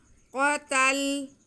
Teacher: क़ाफ हुरूफ़ मुस्तालिया, इसलिए हम इसे मोटा करेंगे